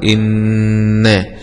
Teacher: همزة كسر إي، نون شدة فتحة مع الغنة